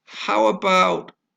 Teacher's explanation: about stress on the second syllable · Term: second syllable stress